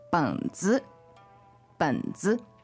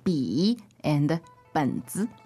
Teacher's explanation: third tone but then a neutral tone following it